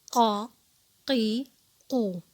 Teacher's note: اس کو پر پڑھا جا رہا ہے اور اقصی اللسان یعنی زبان کی جڑ سے پڑھا جا رہا ہے